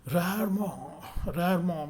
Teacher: In English, the letter R is pronounced at the front of the mouth with the rounded lips. The French R is pronounced at the back of the throat, as if you were clearing your throat, with the tip of your tongue against your bottom front teeth.